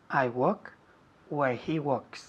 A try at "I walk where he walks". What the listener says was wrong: Walk. La L no se dice. Walk. Walk, no walk. Walk, decimos.